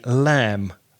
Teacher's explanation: it spelled L AM B but the B is not pronounced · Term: silent B